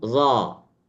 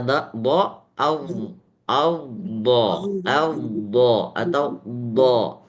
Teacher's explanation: Kalau za tidak ada istitolah, sedangkan dha ada istitolahnya.